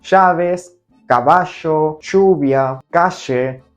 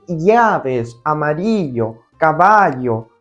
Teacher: In Argentina, it's always as sh sound.